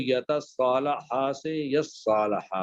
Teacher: تو جو تا تھی، تا کو سواد بنایا، سواد کا سواد میں ادغام کر دیا تو وہ یتصالح سے یصالح بن گیا۔